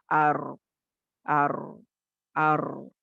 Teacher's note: आवाज थोड़ी जारी है, लेकिन बहुत ज्यादा भी नहीं, सडन स्टॉप भी नहीं हो रही है। · ट्रिलिंग होगी इसकी आवाज की, लेकिन कम होगी ट्रिलिंग, 2 या 3 मर्तबा होगी। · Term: तवस्सुत